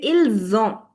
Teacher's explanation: the z sound, because of liaison, linking the sounds